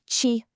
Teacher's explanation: You actually have to curl the tip of your tongue up and back toward the roof of your mouth. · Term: retroflex sound